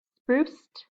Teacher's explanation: Notice this stays right up in the mouth again. So we're going to make it sound like a T when we add the ed